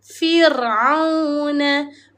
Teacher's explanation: Bacaan huruf ra kena nipis, kena senyum. Rendahkan rahang. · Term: ra tarqiq